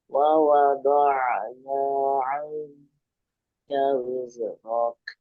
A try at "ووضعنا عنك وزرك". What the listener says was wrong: Jangan mantul ya. Wizrok. Jangan dilepas. Wizrok. Langsung wizrok.